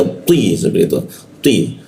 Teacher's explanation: Lidahnya agak dilengkungkan lalu dihentakkan ke bawah, jadi ada seperti hentakan dia. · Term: huruf ti